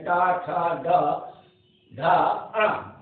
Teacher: टा, टा, जीव देखिए वो तालु के आगे का भाग जो है खुरदरा सा जो है, उसमें उच्चारण टा, ठ, डा, ध या ध, अणा, ये जो है मूर्धन यानी मूर्धा, तालु के आगे का खुरदरा भाग मूर्धा कहलाता है, उससे उच्चारण जीव उस पर स्पर्श करती है, इसलिए उसको मूर्धन कहते हैं। टा, ठ, ड, ध, अण।